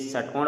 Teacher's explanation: जो यह षट्कोण वाला स होता है इसका उच्चारण होता है मूर्धा से